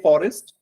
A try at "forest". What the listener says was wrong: you're saying forest. The jaw should come down. Okay, it should not be like this. It should come like this. Forest.